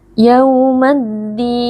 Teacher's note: asyamsiyah karena alif lam bertemu dengan huruf Syamsiyah yaitu huruf Dal Alif lamnya dileburkan ke dalam huruf Dal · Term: alif lam asyamsiyah